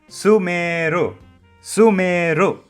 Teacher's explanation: Don't do that. So when you say the word, don't drag the su too much. Drag the meru as Sumeru. Sumeru.